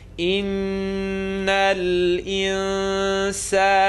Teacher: So we have noon shadda, full nasal sound.